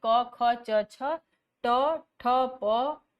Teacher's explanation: इन वर्णों के उच्चारण में प्राण वायु में कंपन नहीं होता, अतः कोई गूंज न होने के से ये अघोष वर्ण होते हैं।